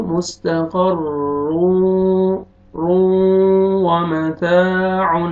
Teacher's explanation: را دو پیش واو شد رو. تنوین کے بعد حروف یرملون آ رہا ہے، ادغام کریں گے غنہ کے ساتھ